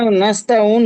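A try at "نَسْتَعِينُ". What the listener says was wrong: কি করে নাস্তা উন হবে দাদু ভাই? নুন অপেশ নু হয়। আমি বলেছিলাম যখন আয়াতের শেষে থাকবেন, থামবেন, আপনি এখানে অফ করবেন। যখন এখানে থাকবেন, তখন এখানে আপনাকে অফ করতে হবে।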